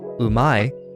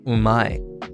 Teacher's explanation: the character is pronounced as a word-initial moraic nasal